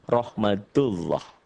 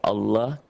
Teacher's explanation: Ini masih tebal. Dibaca tebal berbunyi oh